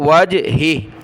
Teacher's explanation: آخر والا ہا جس پر وقف کریں گے وہ ساکن ہو جائے گا